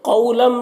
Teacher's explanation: قو میں واو لین ہے، اسے نرم آواز کے ساتھ جلد پڑھنا ہے۔